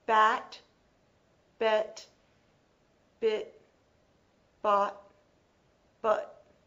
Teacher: So the mouth is a little more open for a and ah. It is more closed for e, I, uh.